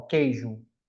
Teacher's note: Na palavra queijo, eu não consigo escutar o som do U, então eu chamo de dígrafo, né?